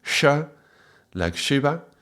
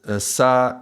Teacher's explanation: the second sound is cerebral, so the tongue is going up. Sha, like Shiva. And then, sa, this is the tongue going forward